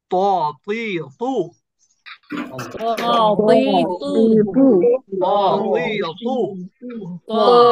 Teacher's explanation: আপনি যখন ত উচ্চারণ করেন, আপনার জিহ্বার মাঝখান একটু উঁচু হয়ে যায় এবং উচ্চারণটা একটু মোটা হয়, ভরাট, অনেকটা ভরাট কণ্ঠের মতন বলতে গেলে। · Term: উঁচু ধ্বনি